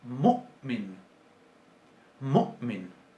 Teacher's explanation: Ese corte abrupto después de la U es fonológico en las lenguas semíticas. Tiene significado. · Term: oclusión glotal